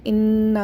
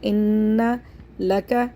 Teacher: کے برابر کھینچ کے پڑھنا ہے۔ اس کو پڑھیں گے انا، نون مشدد کو غنہ کے ساتھ پڑھیں گے